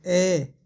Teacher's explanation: इसके उच्चारण में दोस्तों जीभ का मध्य भाग है वो थोड़ा सा ऊपर उठता है